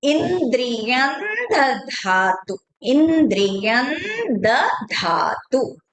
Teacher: So ta, tha, the, na. Na is the Anunasik sound. It is different from the ordinary na what we say. So here it has to be a nasal sound.